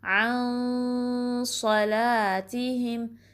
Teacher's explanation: نون کی آواز کو ناک میں چھپانا ہے، اور اس کو ہیوی والا اخفا کہتے ہیں کیونکہ صاد جو ہے ہیوی لیٹر ہے، پر لیٹر ہے، ٹھیک ہے.